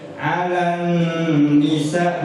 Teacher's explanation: 'Alan ditahan karena ada nun tasdid. Gunnah, dengung. 'Alan nisa, 2 harokat.